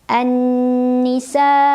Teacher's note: Ada gunnah musyaddadah karena ada nun yang bertasydid. Cara membacanya huruf nun didengungkan, ditahan kurang lebih 2 harokat.